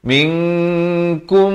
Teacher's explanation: di sini mim mati bertemu mim, idgham mislan saghir, dibacakan dengan dengung 2 harakat.